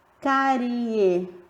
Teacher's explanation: Olha o som do E que é mais forte. Então, o I é a semivogal e o E a vogal, que tem um som mais forte.